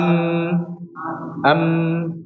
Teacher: pasti bergetar di pita suara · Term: sifat jahar